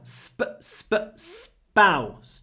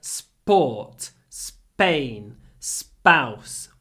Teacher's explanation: of those interesting words like sport or Spain or spy where the p is not aspirated because it comes after a s so it sounds a little bit like s now we can